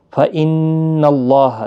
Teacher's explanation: فَإِنَّ اللَّهَ، نون مشدد پر گنہ ہوگا، اللہ کا لام اس زبر کی وجہ سے پر پڑھا جائے گا، یعنی موٹا پڑھا جائے گا، اور اس کے اوپر کھڑی زبر بھی ہے، ایک الف کی مقدار کے برابر کھینچ کر بھی پڑھیں گے۔